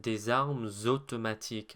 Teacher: Notice how there I said des armes automatiques. I put a liaison between arme and automatique.